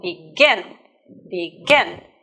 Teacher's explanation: look here you will notice that we doubled letter and because the stress is on the second syllable not on the first syllable but on the second syllable